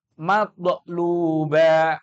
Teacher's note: Toknya dipantulkan dengan setengah harokat. Bukan matluba, bukan. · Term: terpantul